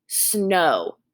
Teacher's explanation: making the long o sound it is a diphthong